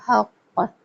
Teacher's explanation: قاف کو ہلا کے سختی کے ساتھ چھوڑا جائے گا